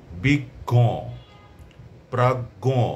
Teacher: শেষে ও আসবে কিন্তু নাসিক্য হবে উচ্চারণটা একটু নাসিক্য প্রভাবিত হবে